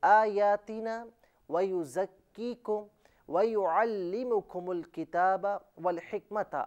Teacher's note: वाव दोनों होंठों की गोलाई से अदा किया जाएगा और हा का ताल्लुक हल्के दरमियानी हिस्से से है।